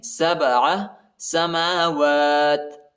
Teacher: با حروف قلقلہ میں سے آتا ہے، با کو جھٹکا دینا ہے